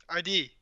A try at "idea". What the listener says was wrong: ID. Idea. You have a Y sound on the end, like a E.